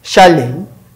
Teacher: This is chalet, chalet. The ch is voiceless, sh, chalet.